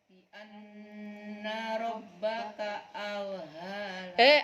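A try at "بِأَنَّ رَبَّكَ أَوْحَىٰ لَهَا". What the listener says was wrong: Auha. Nah, ha kecil. Pertama ha kecil, kedua ha besar. Bi anna rabbaka auhalaha.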